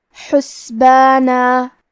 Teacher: حا کی ادائیگی حلق کے درمیان والے حصے سے ہے